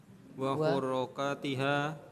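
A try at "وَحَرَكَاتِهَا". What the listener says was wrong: Huro salah. Yang belakang udah benar itu. Wa huro salah. harakatika.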